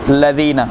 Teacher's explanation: ज़बान की नोक बिल्कुल आगे का हिस्सा सामने वाले दो दांतों के सिरों पर लगाएंगे और बारीक अदा करेंगे ज़ाल को